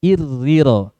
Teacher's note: Kalau i mudah karena dia awalnya tipis, kemudian langsung ketemu ro kasroh tipis.